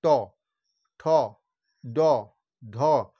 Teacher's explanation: দেখো, ট, জিভটা ঠিক উল্টে গিয়ে মূর্ধাতে স্পর্শ করছে, ট, ঠ, ড, ঢ, মূর্ধান্য। তাহলে এই জিভটা ওই মূর্ধাতে গিয়ে স্পর্শ করে উচ্চারণ হচ্ছে বলে এগুলো হচ্ছে মূর্ধা বর্ণ। এই জন্য এর নাম হচ্ছে মূর্ধান্য। · এটা হচ্ছে দন্তন্য, যেহেতু দাঁতের উচ্চারণ হচ্ছে, আর এই বর্গটা হচ্ছে মূর্ধান্য বর্ণ, যে মূর্ধাতে স্পর্শ করে বর্ণগুলো উচ্চারণ হচ্ছে। দেখো, ট, জিভটা ঠিক উল্টে গিয়ে মূর্ধাতে স্পর্শ করছে, ট, ঠ, ড, ঢ, মূর্ধান্য।